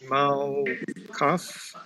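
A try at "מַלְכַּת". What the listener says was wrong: Malkat. That's a T. Malkat.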